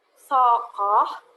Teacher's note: K ini kan diikuti oleh O. Bunyi O itu termasuk vokal belakang. Makanya dia termasuk onset, K onset.